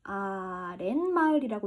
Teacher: 아래라는 순우리말, 마을이라는 순우리말이 붙어가지고 만들어진 합성어인데 얘도 우리 아래마을이라고 읽지 않고 어떻게 읽어요? 아랫마을이라고 읽죠. 니은이 덧났어요. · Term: 니은 소리 덧났구나